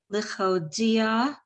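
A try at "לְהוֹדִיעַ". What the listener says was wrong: Just so you know, so the second letter is a hey, not a chet. So it's lehodia. Lehodia lifnei ha'adam gavurotav uchvod hadar malchuto.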